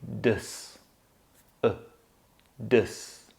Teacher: Now, I know we write the A letter there, but we don't actually say A. We just make the caveman schwa sound once again, and so we say dus.